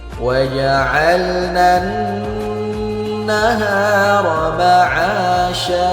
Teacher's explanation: Perhatikan nun yang bertasydid harus kita dengungkan dua harakat. Hukumnya adalah ghunah.